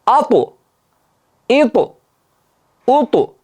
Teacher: To harfida jahr bor, havo kelmayapti, shidda bo'lganligi uchun tovush pasayib ketdi. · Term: qalqala